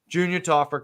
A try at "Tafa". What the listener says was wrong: Why are you saying his name that way? No, you're saying Tafa. You're adding an R at the end every time.